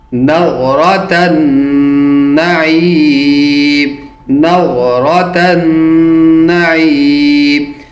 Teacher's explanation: تا کو نون کے ساتھ ملاتے ہوئے نون پر غنہ کریں گے کیونکہ نون مشدد ہے اور جب مشدد نون ہو تو اس کے آگے حروف حلقی میں سے یا حروف یرملون میں سے کوئی بھی حرف آئے تو غنہ وہاں کیا جائے گا.